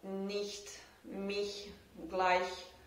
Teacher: So in German we have the CH sound that can be pronounced like that can be pronounced like voiceless palatal fricative, and that is the ich sound. So the tongue goes up to the hard palate, or to the border between soft and hard palate, and it almost stops the air, but not completely.